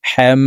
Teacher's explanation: যে তিন কাটাওয়ালা একটি চিহ্ন এই চিহ্নটির নাম হলো তাসদীদ তো ওই জবরওয়ালা হাটি তাসদীদওয়ালা মিমের সাথে 3 সেকেন্ড পরিমাণ গুন্নাহ করে পড়ব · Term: ওয়াজিব গুন্নাহ